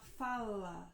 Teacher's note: quando eu vou falar fala, eu coloco a ponta da minha língua bem aqui no alvéolo, que é a parte de trás, onde que eu falei, que tem essas ondinhas.